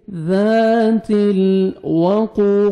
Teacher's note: क़ाफ को मोटा करके पढ़ेंगे और 1 सेकंड खींचना है